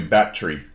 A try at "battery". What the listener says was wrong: No, you see, there's no D's in battery. No, there's no D. No D's in battery.